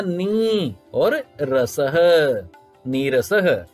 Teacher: र का लोप होगा और ह्रस्व इकार को दीर्घ में बदल देंगे, मिलान के बाद हो जाएगा नी और रसह, नीरसह। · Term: दीर्घ इकार